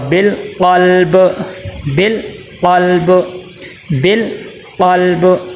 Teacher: با حرف کلکلا میں سے ہے تو با کے اوپر عارضی طور پہ جزم آئے گی، تو پھر یہاں پہ بھی کلکلا ہوگا